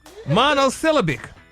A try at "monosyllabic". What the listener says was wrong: The emphasis on the A is wrong. Okay, but the emphasis is wrong.